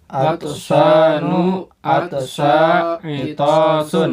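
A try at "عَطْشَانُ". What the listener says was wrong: Nah, ya.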